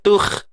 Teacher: Terangkat ni pangkal lidah kita untuk menyebut huruf kha yang mati ni lah. Jangan nipis. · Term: isti'la